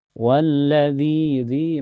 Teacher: Walladzi, dzi matobi karena ada ya sukun sebelumnya harakat kasrah, dzi dibaca panjang dua harakat